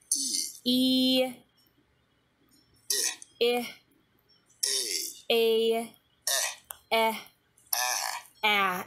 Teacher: you see that the tongue is going progressively lower as we go through these sounds